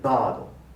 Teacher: it's a low central vowel pronunciation. So for English listeners, if you say bado, they will not understand what you're trying to say.